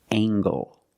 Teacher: making the nasal sound and the hard g